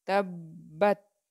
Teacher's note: با کے اوپر شد ہے، 2 بار ادا کی جائے گی